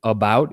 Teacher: the tongue isn't at the E in the front or at the oo in the back. It's in the center. And the lips are unrounded, not like ooh, not rounded like an ooh, unrounded like an E. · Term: the schwa